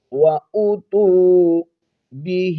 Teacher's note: کھڑی زیر کو ایک الف کی مقدار کھینچیں گے